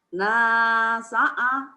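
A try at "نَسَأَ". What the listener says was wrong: Jangan ke hidung, hati-hati.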